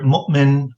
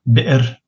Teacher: Hamza is what we in English call a glottal stop.